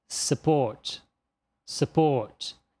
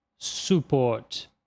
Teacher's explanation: E por fim, nessa palavra, o schwa vem no lugar da letra U. Então pronuncia-se support, support, e não support.